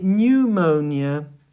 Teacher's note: with pneumonia, you don't pronounce the P, but you just start with the N and you say pneumonia.